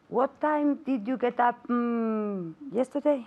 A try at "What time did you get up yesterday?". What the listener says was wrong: Okay, now you're asking me a question, right? So I want intonation.